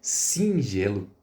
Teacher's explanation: É como se esse i ele tivesse uma marca de nasalização. É como se tivesse um tio em cima dele, né? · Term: dígrafo vocálico